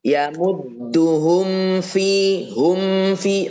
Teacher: rapatin betul mimnya karena kan mim itu dari kedua bibir yang dirapatkan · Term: mim sukun